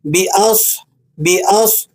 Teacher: صاد پر سکون ہے تو اسے آپ نے تفخیم کے ساتھ یعنی موٹا کر کے پڑھنا ہے۔